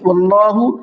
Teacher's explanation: اللہ کے لام کو منہ بھر کے پڑھنا ہے